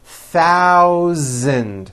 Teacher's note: voiced z sound Z in the word thousand